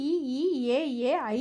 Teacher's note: ஐந்தும் முற்கூறப்பட்ட அகர ஆகாரங்களை போய வாயை திறந்து கூறும் முயற்சியால் பிறக்கும் அத்துடன் மேல்வாய் பல்லும் நாவின் அடியும் அடியோரம் பொருந்த பிறக்கும் அடியோரம்னா விளிம்பு விளிம்பு பகுதியில விளிம்புனா அந்த கார்னர் பகுதி அத்துடன் மேல்வாய் பல்லும்